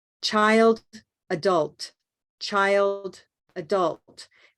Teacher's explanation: the LT endings are going to be sounding the same as the LD endings